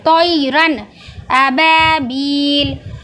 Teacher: نون کی آواز کو پوری طرح ظاہر کر کے جلدی پڑھیں گے۔